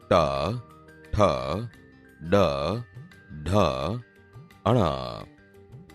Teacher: બોલતી વખતે જીભ ઉપર દાંતના મૂળ ભાગને અડે છે, એટલે તે મૂર્ધન્ય વ્યંજન છે.